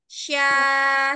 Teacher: jadi dia tidak menggunakan Bi bibir jadi dia menggunakan l lidahnya dia tengah lidah bertemu dengan langit-langit yang tengah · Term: huruf syin